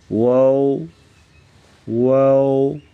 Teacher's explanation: واو کی ادائیگی میں ہونٹوں کو گول کرتے ہوئے اوپر کی جانب کھول کر درمیانی سی مد کریں گے۔ واو واو، ہونٹوں کو گول کر کے پڑھیں گے واو۔